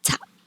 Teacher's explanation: your mouth still closes to represent the p sound but you don't pronounce the sound you don't articulate the sound